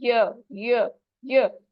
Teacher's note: तो जबान के बीच का हिस्सा जब तालू की तरफ उठेगा तो य अदा होगा।